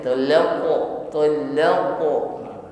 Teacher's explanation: qafnya sukun maka tampakkan sifat qalqalahnya, dipantulkan ya. Jangan ditahan talaqtumu tetapi pantulkan talaqo, talaqo.